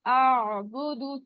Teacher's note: حلق کے درمیانی حصے سے یہ ادا ہوتا ہے اور موٹا حرف ہے, اور اس کو جھٹکا نہیں دینا, نہیں کرنا. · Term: آئین کی آواز